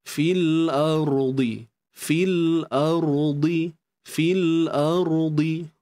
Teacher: ra yang sukun sebelumnya baris atas di sini perlu dibaca tebal pada ra perlu dibaca tebal fil ardi fil ardi fil ardi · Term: ra tebal